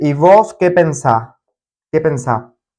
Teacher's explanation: you would say y vos, you skip the last S of vos, and then say y vos qué pensás?